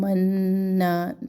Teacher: منا تشدید اور الف مدہ جو ہے دونوں کو ایک ایک چپنا لمبا کر کے پڑھنا ہے